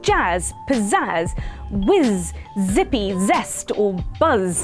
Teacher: the Z sound is called a voiced fricative